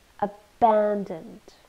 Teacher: Three syllables. It's an adjective, so we stress the second syllable. Abandoned. It means deserted or left alone.